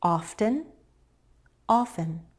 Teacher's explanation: Often could be said with or without the T.